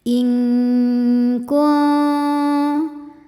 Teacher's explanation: Selanjutnya ada hukum ikhfa hakiki ab'ad karena nun sukun bertemu kaf. Cara bacanya nun disamarkan ke kaf disertai dengung, dengungnya besar.